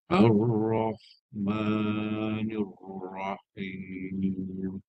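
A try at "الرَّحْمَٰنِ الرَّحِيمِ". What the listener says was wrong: Okey, ra tu dia ada bunyi bunyi itu jangan hilang Kemudian ni huruf dal.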